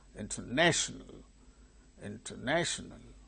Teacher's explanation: Third syllable gains primary stress. So, it is marked before and above.